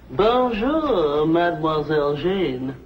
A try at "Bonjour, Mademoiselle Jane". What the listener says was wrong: Except for the mwah. Must be soft. Mwah. Watch my lips closely. Mwah.